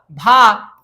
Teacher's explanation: भ क्या है ओष्ठ है महाप्राण है और घोष व्यंजन है